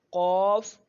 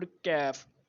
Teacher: قاف جو ہے وہ موٹے والے حروف میں سے ہے, اس کو ہم موٹا کرتے ہیں, اور کیف جو ہے اسے ہم باریک پڑھتے ہیں